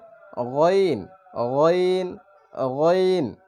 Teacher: গইন হচ্ছে হলকের শেষ ভাগ বা গলার শেষ ভাগ থেকে। শেষ ভাগ বলতে থুতনির নিচে যেখানে গলা শেষ হয়েছে এখানে হবে গইন গইন গইন।